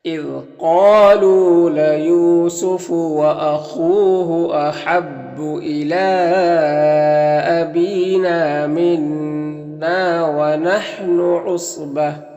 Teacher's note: صاد حروف مستعلیہ میں سے پر پڑھیں گے